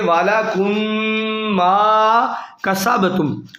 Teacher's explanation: تو یہاں کم کی جو میم ہے، میم ساکن ہے، میم پہ جزم ہے، اس کے بعد میم آ گیا، تو میم کے بعد میم آ جائے، میم ساکن کے بعد، تو یہ ادغام شفوی کا قاعدہ ہوتا ہے، یعنی غنہ کیا جائے گا۔